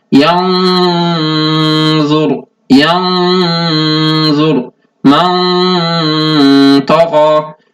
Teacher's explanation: The sound of the gunna should also be heavy.